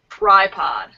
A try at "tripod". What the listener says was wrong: A stronger R when you, so when you have your T, you start with your lips kind of back, T, but then you have to get your lips in place for that R sound. Tripod.